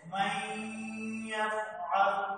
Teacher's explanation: যেমন প্রথম যে শব্দটি রয়েছে মান, এখানে সাকিন রয়েছে এবং পরবর্তী শব্দের প্রথম হরফ হচ্ছে ইয়া, এবং ইয়া যেহেতু ইদগামের হরফ এবং ইদগামে বা গুণনার হরফ, যার কারণে এখানে নুন সাকিন শব্দ, সেখানে নুনটি নুনের দ্বারা উচ্চারিত না হয়ে পরবর্তী যে ইয়া রয়েছে তার সঙ্গে মিলিয়ে পড়তে হচ্ছে এবং এখানে গুণনা করতে হচ্ছে মাইয়াফআল।